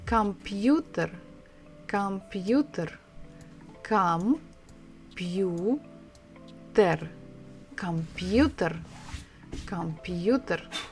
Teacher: So the stress is on the third syllable, and the sound of this bukva is the same as in English.